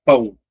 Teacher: eu já tenho aqui um ditongo decrescente, mas agora eu já tenho a marca de nazalidade · Então mais uma vez, ó, não separa, o A é vogal, a letra O é semivogal, tem o som mais fraco. Então, ó, eu já tenho aqui um ditongo decrescente. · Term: ditongo decrescente nasal